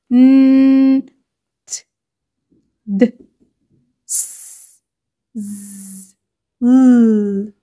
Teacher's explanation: لاحظوا كده ان الاصوات كلها خارجه من المكان اللي هو الالفيولار ريدج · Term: alveolar